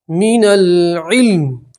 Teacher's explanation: وقف کریں گے تو میم کے نیچے جو زیر ہے اسے ہم ہٹا دیں گے اور میم کے اوپر جزم پڑھیں گے